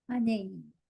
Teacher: So there was no rasping there. It was just on the cusp of being voiced or unvoiced.